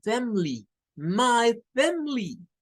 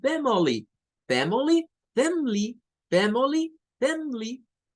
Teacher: Esta palabra tiene otra característica. Y es que en algunos dialectos del inglés le quitan el sonido del schwa. Entonces, algunas personas hacen de cuenta y caso como que solo tiene dos sílabas, omitiendo la sílaba de en medio.